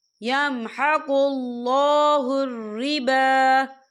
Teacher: ربا با کے پر کھڑی حرکات ہے تو ہم اسے 2 یا 3 حرکت کے برابر کھینچے پڑھیں گے